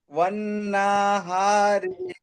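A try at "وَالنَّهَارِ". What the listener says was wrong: নুন টান হচ্ছে কেন?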